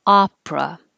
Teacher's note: forget the middle e just push it out